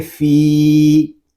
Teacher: فا کو ہم ایک الف تک کھینچ کر پڑھیں گے کیونکہ یہاں پہ یا مدہ ہو رہا ہے